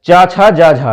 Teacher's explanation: स्पर्श संघर्षी व्यंजन होते हैं चा, छा, जा, झा